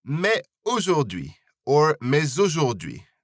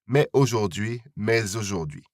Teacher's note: This liaison is optional, so it's up to you whether you pronounce the S at the end of mais or not.